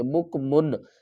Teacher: یہاں پر ہم من اور مو نہیں کریں گے، اخفا نہیں کریں گے اور غنہ بھی نہیں کریں گے